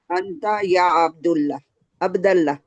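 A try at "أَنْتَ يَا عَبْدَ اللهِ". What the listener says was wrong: अब्दल्ला, या आया ना, या आया ना, या के बाद वो अब्दू को अब्दा कर देगा, राइट।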